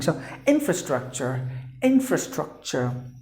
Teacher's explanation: So there are 4 syllables, you have to stress in the beginning.